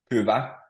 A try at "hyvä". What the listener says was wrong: It might be difficult to hear, but the H is also pronounced. So there's a clear sound in the beginning. So hyvä. And H doesn't, there's no double H in Finnish. So there's just a single H version or ho.